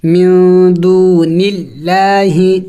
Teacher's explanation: یہاں پہ دیکھیں ایک قاعدہ یاد رکھے کہ لفظ اللہ سے پہلے جب زیر آ جائے، لفظ اللہ سے پہلے جب زیر آ جائے تو پھر لفظ اللہ کو باریک کر کے پڑھا جاتا ہے